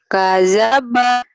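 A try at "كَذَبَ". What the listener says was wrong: Kadzaba zal yang kamu susah itu. Kadzaba kadzaba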